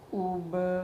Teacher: او پہ ہونٹ گول ہو رہے ہیں، با پہ دوبارہ واپس چلے گئے ہیں۔ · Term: ساکن